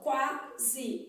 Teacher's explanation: Esse S tem som de Z, então eu posso representá-lo aqui por Z, né? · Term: S com som de Z